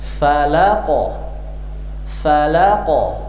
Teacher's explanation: Kalau qaf pangkal lidah paling belakang dia. Falaq naik ke bagian langit-langit yang lunak belakang. Falaq langsung dilepas. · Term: qalqalah yang berat